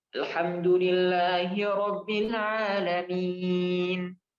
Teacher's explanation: Nunnya ini huruf hidup yang seharusnya alhamdulillahi rabbil alamin. Karena dia diwakafkan, maka dia bacanya min jadi sukun. Nah, ini mad arid disukun. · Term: mad arid lis sukun